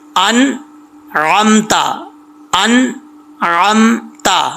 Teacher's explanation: نون کے اوپر آواز جا کر جم جائے، کلکلا نہ ہو